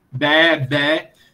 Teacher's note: isso é um E longo, era pronunciado aberto no grego clássico